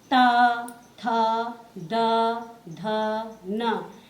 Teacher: ये दंत द्वारा बोले जाते हैं।